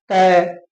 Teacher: जब हम इनका उच्चारण करेंगे तो जीवा वो दांत पर आएगी। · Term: दंतेय